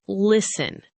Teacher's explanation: It has a letter T right in the middle. But we do not say the T. We just say listen. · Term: silent letters